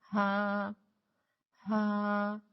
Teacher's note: بغیر رگڑ کاتی سانس کے ساتھ آپ نے اس کو ادا کرنا ہے ہا ہا، اور یاد رکھیں کہ ہا کی ادائیگی میں سانس زیادہ نہ نکالے، جیسے کہ ہا ہا، ٹھیک ہے؟